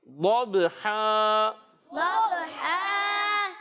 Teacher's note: با حرف قلقلہ میں سے ہے، اس میں قلقلہ کریں گے، آواز لوٹ کر آئے گی